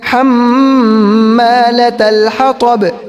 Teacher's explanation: یہاں پر حما کے اندر ایک الف کے برابر گننا ہوگا